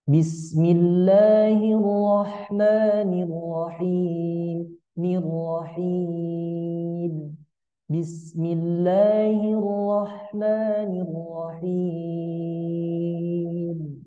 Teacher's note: bacaan Basmalah kita gunakan nada lurus lurus tanpa variasi kemudian plus turun turunnya itu di ujungnya ya teman-teman dikata arrahim Bismillahirrahmanirrahim mirrahim Bismillahirrahmanirrahim ya Coba kita sama-sama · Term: nada lurus plus turun